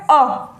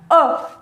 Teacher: अ का जो उच्चारण स्थान है वो हमारे जीभ का मध्य वाला भाग है। अगर बात की जाती है पश्च स्वर की जीभ के प्रयोग के आधार पर, तो पश्च स्वर वे स्वर हो जाएंगे जिनका उच्चारण स्थान हमारी जीभ के पिछले भाग से होता है, तो वो क्या हो जाएंगे? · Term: मध्य स्वर